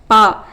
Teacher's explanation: இதழ்கள் இரண்டும் ஒட்டுவதால் பிறக்கும் எழுத்து